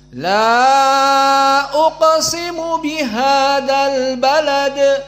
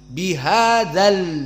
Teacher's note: la uqsimu bihal Balad mana matabiinya jatuh karena iltaq Bain sakinain Alif dan lam dua-dua sukun maka dimasukkanlah dza tanpa Mad bihadal maka Hamzah di sini juga tidak dibaca albalad hamzahnya tidak